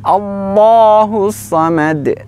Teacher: Huruf lam pada kata Allah sifatnya adalah tebal. Diangkat pangkal lidahnya.